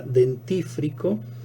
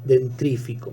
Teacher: aquí vemos cómo el sonido vibrante ha mutado hacia una posición anterior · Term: metátesis